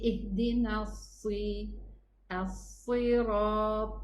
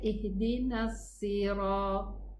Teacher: make sure that we make the itbaq when we pronounce the letter sad, and we give it its isti'la, elevation that it requires, plus the whistling sound, and of course ar-rakhawa, because the three letters have this rakhawa, okay, the running of the sound.